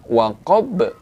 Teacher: huruf ba itu adalah termasuk salah satu huruf dari huruf qalqalah dan dia berada di akhir ayat, maka kita baca dengan qalqalah kubra, yaitu dipantulkan.